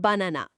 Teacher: প্রথম আর শেষের আ দুটো হলো শোয়া, আর মাঝের আটার উচ্চারণ স্পষ্ট।